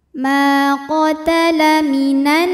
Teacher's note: Sebab ada alif yang sebelumnya berharokat fathah. Cara bacanya adalah mim dipanjangkan 2 harokat. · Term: mad tabi'i dhahiri